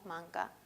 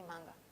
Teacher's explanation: Ambas son consonantes oclusivas porque hay cierre total y además ambas son velares porque la parte posterior de la lengua toca la zona del velo del tracto vocal. La diferencia es que una es sorda y la otra es sonora.